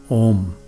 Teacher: this letter is a compound vowel and in Sanskrit all compound vowels are long vowels so its sound is held for twice as long as a short vowel